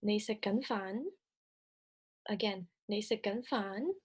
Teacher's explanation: noted the rising intonation towards the end